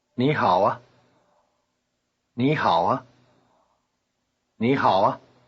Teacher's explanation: notice that the neutral tone of ah is high pitched